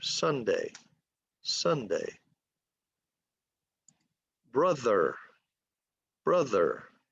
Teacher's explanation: Two syllables, accent on the first syllable. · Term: legato